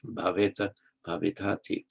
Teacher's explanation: the final vowel is lengthened before a T